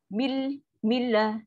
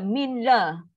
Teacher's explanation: Dia mesti milla masuk terus. Nun ni tak ada fungsi. Sebab apa? Dia dah masuk dekat lam.